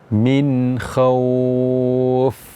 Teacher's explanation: kita mengucapkan huruf fa-nya itu dengan berangin, keluar angin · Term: hamas